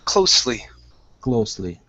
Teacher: Instead of closely, give me an unvoiced S.